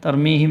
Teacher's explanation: میم ساکن کے بعد با آیا تو گننا ہوگا